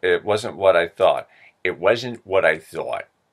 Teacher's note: the s becomes an sh